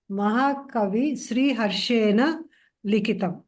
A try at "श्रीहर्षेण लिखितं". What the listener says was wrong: Sometimes Natva we miss. It's not a great problem at this level. Well done.